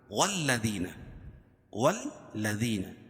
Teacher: واو کو لام میں سختی کے ساتھ ملائیں گے، کیونکہ لام کے اوپر تشدید ہے، اور تشدید والا حرف دو مرتبہ پڑھا جاتا ہے اور سختی کے ساتھ